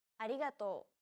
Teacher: to think of the quick tapping motion your tongue makes as it strikes the top gum ridge